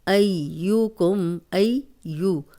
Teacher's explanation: ہم نے پڑھا تھا اب، اب، اب، تو اب دیکھیں یہاں پہ یب قلقلہ آ گیا ہے، با پہ جزم ہے، لیب لوبا، لوبا، اب پیش اور زبر ذرا بھی لمبی نہیں ہوگی، کم، لیب لوکم ایوکم، ایو، اب یا کو 2 بار پڑھیں گے، ایک دفعہ پچھلے زبر کے ساتھ اور ایک دفعہ اس کی اپنی حرکت کے ساتھ